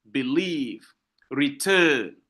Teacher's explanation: La première syllabe n'est pas accentuée, la deuxième syllabe est accentuée.